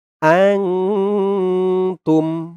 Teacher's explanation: ইকফা গুন্নাহ নুন সাকিনের পরে ইকফার হরফ তা আসছে